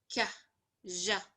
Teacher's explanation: velar, back of the tongue and the soft palate